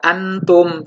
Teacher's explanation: tidak jelas n tapi samar tetap berbunyi Nun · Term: hukum ikhfa